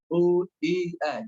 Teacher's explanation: U yang dhammah dimanyunkan, yang kasroh rahangnya turun, I jelas, ya tidak E, tapi I jelas. Kemudian yang fathah maka ditipiskan, selain huruf-huruf yang dibaca O, A ditipiskan. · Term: bunyi harokatnya